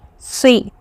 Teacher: It should not be swi. There should not be wow sound. Okay, it is si, a little bit round shape.